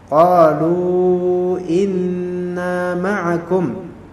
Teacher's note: Nunnya didengungkan karena dia tasydid · Qalu inna ini di sini ada hamzah qata' harus dibaca